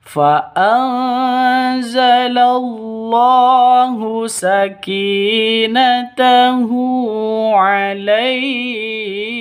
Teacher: fa'anza nun mati bertemu dengan zain. Cara bacanya samar didengungkan, siap-siap ke huruf se-nya karena bacaan ikhfa hakiki seperti itu.